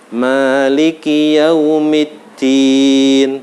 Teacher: Jangan terlalu dipanjangkan, tapi jangan dihilangkan bacaan panjangnya. Cukup 1 alif atau 2 harokat. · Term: Matobingi